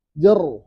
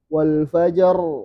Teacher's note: Ini kan ra-nya sukun. Nah, ra kalau sukun biasanya tebal